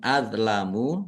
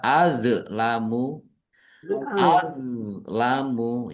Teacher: Do sukun bukan qalqalah. Jangan dipantulkan ya